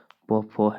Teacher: ओष्ठ का उच्चारण स्थान जो है प फ है